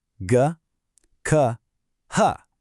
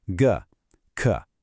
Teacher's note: K is just the G sound but with that puff of air